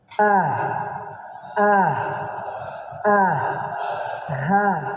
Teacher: tenggorokan paling bawah atau pangkal dari tenggorokan Ini tenggorokan yang paling dekat dengan dada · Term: Hamzah dan ha